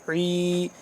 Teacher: حلق کے درمیان والے حصے سے عین ادا ہوتا ہے، تھوڑا سا کھینچ کے